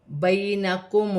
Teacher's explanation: یا ساکن سے پہلے زبر ہے تو یالین بنے گے، اسے کھینچا نہیں جائے گا۔ · لام ساکن کو میم کے ساتھ ملا کر پڑھا جائے گا۔ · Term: واولین